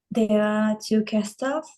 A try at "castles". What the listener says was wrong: 2 castles. Jadi T-nya itu hilang. Castles.